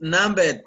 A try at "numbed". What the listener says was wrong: You don't pronounce the B. Numbed. Numbed. No, don't pronounce the B. Numbed. Numbed.